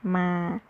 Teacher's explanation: M and A is pronounced with mid tone, it is ma.